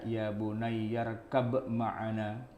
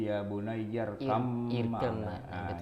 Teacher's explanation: dibaca izhar yang berarti huruf ba-nya dibaca qalqalah